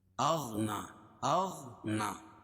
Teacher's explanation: نون پر کھڑا زبر قائم مقام الف مدہ کے، اس کو 1 الف کے برابر کھینچ کے پڑھیں گے